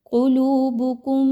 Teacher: میم مشدد ہے تو یہاں پہ اس کا غنہ کیجئے، آواز کو ناک میں لے کر جائیے اور تھوڑی دیر رک کر رکھیے۔